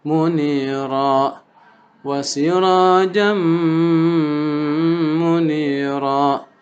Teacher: Tandanya fathah tain atau tanwin ketemu dengan huruf mim. Munira, ra-nya sama dengan pada wa nadhira yaitu mad iwad, dibaca hanya 2.